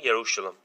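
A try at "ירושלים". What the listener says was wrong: Non, c'est Yerushalayim, pas Yerushalam. Répète après moi. Yerushalayim.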